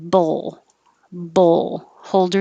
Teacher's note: tongue in the l position at the end so we can hear it